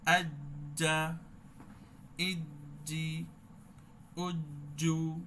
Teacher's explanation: আচ্ছা, জিমটাও সেম, জিমটাও সিদ্ধ হরুপ, সাউন্ডটা কিন্তু ঠিক জিহ্বার মধ্যখান উপরের দিকে তালুর দিকে লাগে